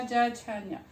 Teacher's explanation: जा, झा, न्या, यहाँ पर हम तालु का स्पर्श कर रहे हैं